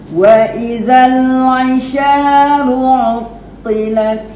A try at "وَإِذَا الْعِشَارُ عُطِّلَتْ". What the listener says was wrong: Okey, ain tu makcik bagi godam lagi dekat leher tu. Bukan leher, kat dinding rengkung kan. Dia tak bunyi. Dia keluar ke hidung satu, betul satu dia punya tebal. Kan kita nak bagi dia punya nipi-nipi je. Wa idzal 'isharu 'uttilat. Wa idzal 'isharu 'uttilat.